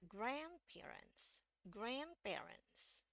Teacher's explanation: karena ini yang dapat tekanan lebih tinggi itu yang eh grand-nya